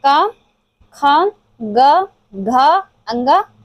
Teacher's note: क वर्ग जो कंठ से उच्चारित होता है।